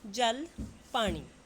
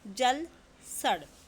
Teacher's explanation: ਲਲਾ ਧੁਣੀ ਨੂੰ ਉਚਾਰਦੇ ਸਮੇਂ ਜੀਭ ਉੱਪਰਲੇ ਦੰਦਾਂ ਦੇ ਅੰਦਰ ਲੇ ਪਾਸੇ ਛੂੰਦੀ ਹੈ ਪਰ ਲੱਲੇ ਪੈਰੀ ਬਿੰਦੀ ਦੇ ਉਚਾਰਨ ਸਮੇਂ ਜੀਭ ਉਲਟ ਕੇ ਕਠੋਰ ਤਾਲੂ ਨੂੰ ਛੂੰਦੀ ਹੈ।